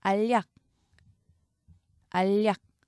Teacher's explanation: 먼저 니은이 덧난 다음에 니은이 리을의 영향으로 다시 리을로 바뀝니다. 유음화까지 일어나죠.